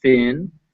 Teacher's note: your throat will not vibrate when you say it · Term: th in thin